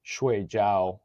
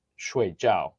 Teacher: And then add tones on top of that, because you have 1, 2, 3, and 4, which is like the classic example is shui jiao with a flat tone is dumpling, but shui jiao with a fourth tone or a downwards tone is to sleep